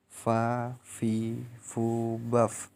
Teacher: Baik, yang ke-20 melafalkan huruf fa, keluar dengan menyentuhkan ujung 2 gigi seri bagian atas dengan bibir bagian dalam